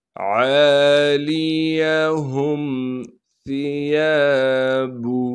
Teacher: ثا کو نرم کر کے باریک کر کے پڑھنا ہے، یا کے بعد الف مدہ ہونے کی وجہ سے یا کو ایک الف کے مقدار کھینچیں گے، با کو بغیر کھینچے پڑھنا ہے۔